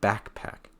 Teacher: It's actually going to be backpack. So it gets a heavier stress on back.